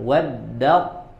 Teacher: ta sukun setelahnya tho yang berharakat Maka langsung melebur ke huruf tho karena tanya huruf lemah dan tidak bisa mempengaruhi huruf yang kuat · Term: idgham Kamil